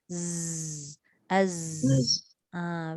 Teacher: Dia berdesir saja tapi tak ada angin. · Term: Sofir